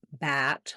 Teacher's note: more open front of the tongue down back of the tongue lifted